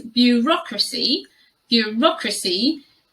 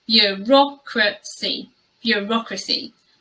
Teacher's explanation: that first sound is really hard to say, the blend of the b, y sound